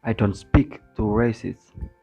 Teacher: Di sini mengandaikan bahwa John is a racist itu adalah given information. Jadi tonic bergeser dari last lexical item racist ke item lexical sebelumnya.